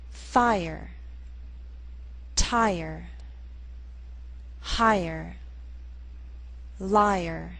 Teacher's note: in these words be sure to make the r sound a separate syllable